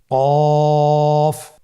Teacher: কফ উচ্চারণের ক্ষেত্রে অবশ্যই 3 আলিফ টেনে পড়তে হবে।